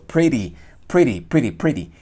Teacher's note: Pero ya corremos un poco hacia adelante, o sea, corremos un poco el pin, pineamos sobre las bicúspides, presionamos la lengua sobre las bicúspides y allí es donde podemos lograr hacer este movimiento, el flap, que es característico de la T y la D cuando se encuentran entre vocales.